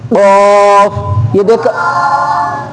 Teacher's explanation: یعنی زبان کی جڑ اور تالوں کے نرم حصے سے ادا ہوتا ہے۔ زبان کی جڑ اور تالوں کے نرم حصے سے، یعنی زبان کا آگے والے نہیں، آخر سے جو ہماری گردن کے قریب ہے نا، اس طرف سے اور اس طرف سے اوپر تالو جب دونوں آپس میں ملے گے تھوڑا سا، تو پھر قاف ادا ہو جائے گا، قاف۔